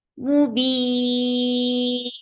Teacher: So temporary sukun of noon is calling tawassut here. So you are creating tawassut and you are changing this 2 counts long into 4 counts long vowel. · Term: mad arid sakun